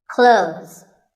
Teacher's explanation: Well, first of all, this word is not cloths. When we say clothes, the TH in the middle can often be silent. Clothes. But it's not wrong if you say these letters with a the sound.